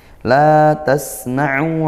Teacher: mohon maaf sin sukun didesiskan